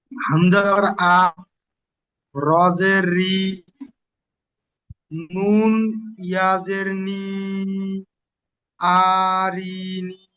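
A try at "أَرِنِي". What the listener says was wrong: হয়নি আপনার পড়া। সর্বপ্রথম হামজা সাবার আ, রজের রি, আমি বারবার বলছি দুটো এক করতে হবে, আরি, আরি, তারপর বলবেন নুন ইয়া জের নি, তারপরে তিনটে এক করবেন। টান আছে, ফারাকাতের পড়া টান হয়।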